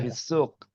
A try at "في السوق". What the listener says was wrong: Sahih. Pakai sin ya, jangan shin. Nah